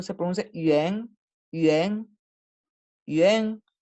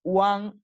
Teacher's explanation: la A, en este caso, tiene más bien un sonido parecido al de la E del español, una E abierta